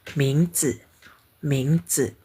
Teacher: Kalau berdiri sendiri bacanya C. Tapi kalau jadi ming ce bergabung dengan ming ce ini jadi nada ringan ya.